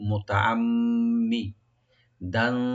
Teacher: মাঝখানে যে মি মুসাদ্দাদ আছে এখানে গুণা করে একটু মি বলবেন